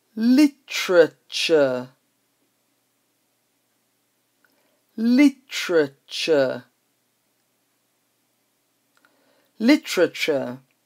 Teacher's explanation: So the usual T-U-R-E ending is ch, but we have tr-ch.